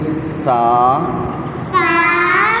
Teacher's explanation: زبان کی نوک اوپر والے جو 2 بڑے دانت ہیں ان کے ساتھ ٹچ کر کے ایس کی آواز دے دیں گے